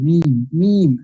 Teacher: মিম, দুই ঠোঁট থেকে, বাট এটা নাক দিয়ে আসবে